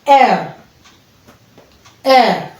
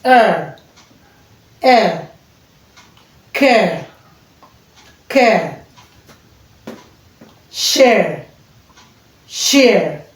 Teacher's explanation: Then we have air from eh to uh